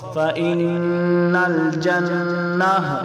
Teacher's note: یہ گولتا ہے آخر میں تو وقف میں گولتا کو ہاں پڑھا جاتا ہے۔